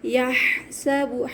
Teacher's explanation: ہا کو حلق سے اچھی طریقے سے ادا کریں گے، حلق کے درمیانی حصے سے